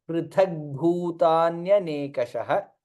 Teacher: tha is mahaprana and bha is also mahaprana